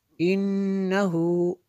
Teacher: نون مشدد ہے غنہ ہوگا